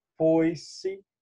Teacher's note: Nota que na palavra foi-se, nós temos uma vogal seguida de uma semivogal. Eu tenho um ditongo.